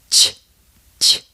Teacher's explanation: The tongue and lips coordination on this is the same as it is for the letter J, the difference being that you don't engage your vocal cords. So instead of j, it sounds like ch, ch.